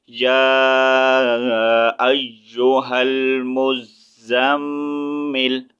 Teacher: وقف کی صورت میں ہم نے لام پیش لو نہیں پڑھنا، آیت کمپلیٹ ہو رہی ہے